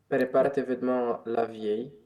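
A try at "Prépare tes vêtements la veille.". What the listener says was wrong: La veille, attention, la veille, c'est la soirée d'avant, c'est un moment, tandis que la vieille, c'est une personne âgée.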